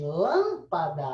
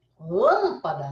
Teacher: você tem uma vogal que é uma vogal nasal. Ela não é uma vogal oral.